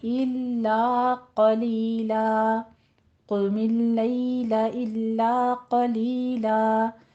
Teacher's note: दोनों जगहों पे क़ौफ को पुर पढ़ना है, लैला में या लीन अदा करनी है